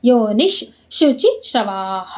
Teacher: ಇಲ್ಲಿ ವಿಶ್ವಯೋನಿಶ್, ನೀ ಮುಂದೆ ವಿಸರ್ಗ ಮುಂದೆ ಶು ಇದೆ ಅಲ್ವಾ, ಅದಕ್ಕೆ ಅರ್ಧ ಶ